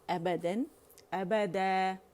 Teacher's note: جب اس پہ 2 زبر کی تنوین ہوتی ہے تو یہ کیونکہ 2 زبر کی تنوین جو ہے فتحتین جو ہے یہ الف کے ساتھ آتا ہے تو یہ الف مدہ میں بدل جاتا ہے